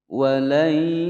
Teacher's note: ada nun sukun bertemu dengan Ya hukum bacaan Idgham Bighunnah dimasukkan dan didengungkan selama dua ketukan